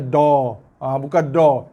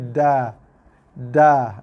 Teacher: Dia bunyi ke dalam. Dia istifal. Dia merendah